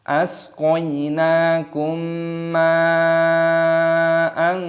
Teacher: mad wajib mutasil, panjangkan 6 ketukan